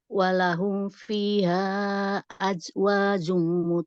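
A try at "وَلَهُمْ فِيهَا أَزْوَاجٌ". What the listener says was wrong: itu bukan ja tapi za jadi zebra azwajun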